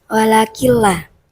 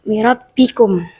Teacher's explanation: Cara bacanya adalah memasukkan nun sukun atau tanwin ke huruf setelahnya tanpa disertai dengung.